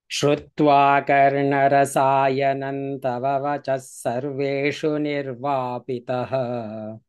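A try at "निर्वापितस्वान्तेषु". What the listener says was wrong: We cannot do nirvapitaha because it is not visarga.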